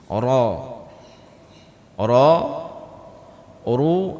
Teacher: Ujung lidah bertemu gusi dekat dengan makhraj sebelumnya huruf nun. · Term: huruf ra